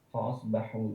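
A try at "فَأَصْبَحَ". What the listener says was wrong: Kenapa tiba-tiba domah dia di situ?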